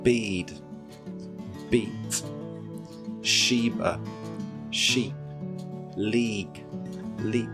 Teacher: Can you hear how the vowel length is shorter in the second set of words? Remember, don't allow the E sound to become so short that it turns into an I.